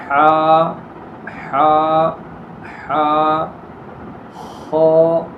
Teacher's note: حروف مستعلیہ میں سے پہلا حرف آیا جس کو ہمیشہ ہر حال میں پر پڑھنا ہے